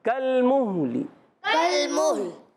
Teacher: میں مہلی پڑھ رہا ہوں مگر زیر جلدی سے پڑھ جاتا ہوں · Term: وقف بالروم